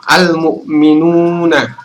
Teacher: Waw ini adalah mat tobi, teman-teman. Mat tobi berarti kita baca sepanjang 2 harokat atau 2 ketukan, atau sama saja kalau kita menyebut 1 alif.